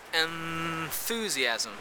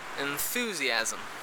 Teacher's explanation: For example, the word enthusiasm, you say enthusiasm, meaning that that nasal is actually a dental nasal, instead of the alveolar nasal,